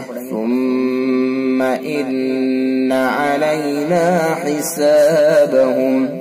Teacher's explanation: इन्ना में भी हर्फ गुन्ना होगा, मीम मुशद्दद में भी गुन्ना और नून मुशद्दद में भी गुन्ना, दोनों के अंदर गुन्ना करके पढ़ेंगे